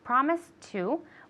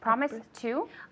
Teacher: Good, okay, so here, promise to, since it has a T sound, they both have a T sound, we can link it so it sounds like one word.